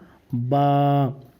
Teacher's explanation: के ऊपर वाला हिस्सा जो वो सूखा रहता है तो बा का मखर है दोनों होठों की तरी तो जब दोनों होठ को की तरी को ऊपर और नीचे